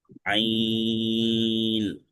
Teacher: আইন কণ্ঠনালীর মধ্যখান চেপে